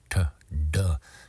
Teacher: touching the tongue right behind the two front teeth in an area called the Alvar Ridge and here's a side